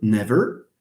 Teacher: the word never okay never you have a r sound usually in British English the r deletes so what we have is a the vowel is reduced it's